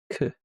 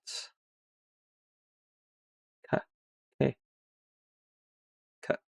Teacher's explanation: It's the aspirated version of g. So it sounds like sort of puff of air comes out. So instead of it being like a almost like a glottal stop in your throat, or g, this is a proper like sort of forcing out a k. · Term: aspirated consonants